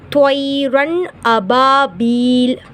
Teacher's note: நூன் சாக்கின் அல்லது தன்வீனுக்கு பின் இல்ஹார் உடைய 6 எழுத்துக்கள் அம்சாஹா, ஐன்ஹா, கைன்ஹா ஏதாவதொன்று வருமானால் நூன் சாக்கினையும் தன்வீனையும் குன்னா இல்லாமல் வெளிப்படுத்தி ஓத வேண்டும் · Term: இல்ஹாருடைய சட்டம்